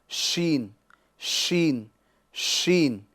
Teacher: یعنی بیچ زبان اور بیچ تالو سے ادا کرنا ہے